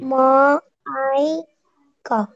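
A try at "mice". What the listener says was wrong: খ হবে না, এটা এই যে ই এর আগে সি আছে, এটা ছ হবে, বলে ছ।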